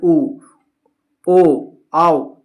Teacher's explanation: वृतमुखी, जिन स्वरों के उच्चारण में ओठ आपका गोलाकार होता है, जैसे उ, ओ, आओ, तो ये सब उच्चारण कीजिएगा ना तो आपका मुख जो है वो गोल हो जाएगा, आपका जो ओठ है वो गोल आकार में हो जाएगा, गोल शेप में आ जाएगा।